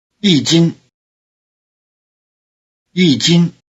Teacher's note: Notice that the high tone of yī changes to falling tone before the high tone of jīn.